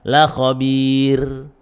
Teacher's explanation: la khabir itu didahului kasroh dan ya sukun, maka itu menjadi tipis. Jangan dibaca la khabir, salah, la khabir gitu, tipis ya.